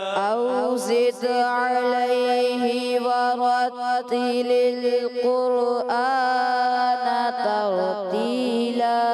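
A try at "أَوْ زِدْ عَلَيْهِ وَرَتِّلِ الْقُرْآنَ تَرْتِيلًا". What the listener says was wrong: क़ुरआन तरतीला, रा हिले नहीं, ठीक है ना। औ ज़िद अलैहि वरत्तिलिल क़ुरआन तरतीला।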